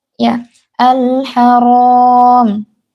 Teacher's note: Ro-nya ini tebal, walaupun ha itu huruf tipis, tapi karena ro itu berharokat fathah, jadi dia dibaca tebal.